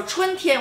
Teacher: 春 first tone 天 First tone